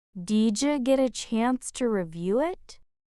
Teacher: That soft J in didja, did you feel it?